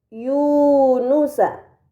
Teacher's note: Pada kata Yunusa terdapat harokat dhammahtain yang berada di huruf ya bertemu dengan waw sukun, ini dinamakan mad tabi'i, maka harus dibaca panjang selama 2 harokat